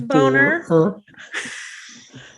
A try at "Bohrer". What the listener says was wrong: That's an H. That's not an N. Bohrer.